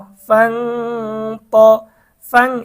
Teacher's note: ইকফার হরফ ত এসেছে গুন্না সহ স্পষ্ট পড়তে হবে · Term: ইকফার গুন্না